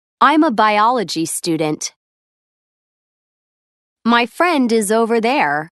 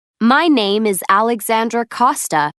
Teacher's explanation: Notice how final consonant sounds are often linked to the vowels that follow them. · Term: Linked sounds